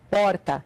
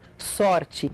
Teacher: esse som de R é feito com a ponta da língua vibrando